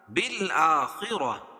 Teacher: بالآ کھڑا زبر قائم مقام الف مدہ کے. خا کو پر پڑھیں گے اور را کو بھی پر پڑھیں گے, اور گول تا کو وقف کی حالت میں ہائے ساکنہ سے بدل دیں گے.